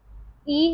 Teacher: अग्र अवृत्ताकार समृद्ध स्वर ध्वनि हमारी ई है